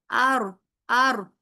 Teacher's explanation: بالکل نرمی سے جا کے لگے گا اوپر کی طرف ہلکا سا، اور اس میں وائبریشن سی ہوگی، کیونکہ جب آپ نے اوپر جا کے ہلکا سا لگایا تو کیا ہوگا کہ آواز سیدھی سیدھی آنے کی بجائے سائڈوں سے ہو کے نکلے گی. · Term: تکرار